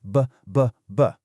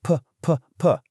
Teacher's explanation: When you say bat, your vocal cords are actually vibrating. You can literally feel it. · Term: voicing